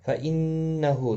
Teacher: نون مشدد پر گنہ ہوگا